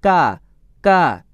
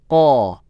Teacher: Pangkal paling belakang, yang bersentuhan dengan langit-langit yang belakang. Ini keluarnya huruf qaf